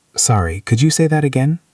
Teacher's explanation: The intonation goes up at the end. It is a question.